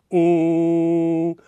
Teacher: takes your mouth out of the mix and sends all of the sound up through your nasal cavities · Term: ng sound